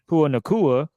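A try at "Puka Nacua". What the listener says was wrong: Is that how you say his name? Is the K silent? Yeah, about to say there's Puka. Puka is in there somewhere.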